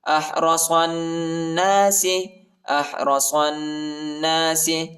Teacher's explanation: الف اور لام نہیں پڑھا جاتا، الف اور لام کے اوپر حرکت نہیں ہے، اور ادھر غنہ بھی کریں گے